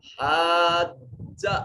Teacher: یہ بڑا مد ہے، بڑی مد ہے، اس کو 3 سے 4 الف کے برابر لمبا کریں